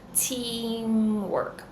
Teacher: You're going to say a T sound with the quality of S. So just like we have the word Mitsubishi, we have the T and then the S, this ts, ts. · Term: true T